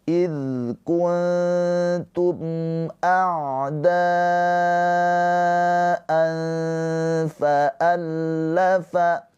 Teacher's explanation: Di sini ada mim sukun bertemu selain mim dan ba. Ini adalah izhar syafawi. Mimnya dibaca dengan jelas.